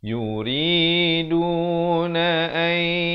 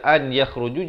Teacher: Di sini kena baca idgham bi gunnah, masuk beserta dengung.